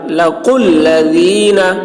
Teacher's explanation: قاف کی آواز موٹی ہوگی، ذال کی آواز باریک. لَقُوا الَّذِينَ، واو اور الف کو نہیں پڑھا جائے گا، قاف کو لام سے ملا کر.